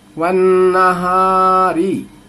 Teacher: ون نہاری. ون واو کو نون سے ملانا ہے، بیچ کے الف لام کو نہیں پڑھنا ہے